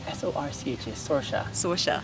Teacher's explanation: And then the CH makes more of a sh sound.